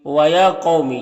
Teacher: یا میں کھڑا زبر ہے، یہ الف مدہ کی طرح ہوتا ہے، اسے ایک الف کے برابر کھینچ کر پڑھیں گے۔ قوف حروف مستعلیہ میں سے اسے پر پڑھیں گے۔ · قوف حروف مستعلیہ میں سے اسے پر پڑھیں گے۔ یہاں پر واو ساکن سے پہلے قوف کے اوپر زبر ہے تو واولین ہوگا، اسے نرم آواز کے ساتھ جلد پڑھیں گے۔